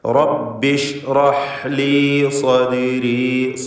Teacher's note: അക്ഷരങ്ങളൊക്കെ ക്ലിയറായി മഖ്റജിൽ നിന്ന് ഉച്ചരിക്കുക. ഹ തൊണ്ടയുടെ മധ്യമാണ്. · സ്വാദ് ഇസ്തിഅലാന്റെ ഹർഫാണ്. തഫ്ഖീം ചെയ്ത് ഉച്ചരിക്കണം. ദാലിന് ഖൽഖല സുഗ്റ നൽകി ശബ്ദം ഹറക്കത്ത് പോലെ സുക്കൂൻ ചലിപ്പിച്ചുച്ചരിക്കുക.